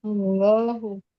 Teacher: Karena dia lafaz Allah harus tebal.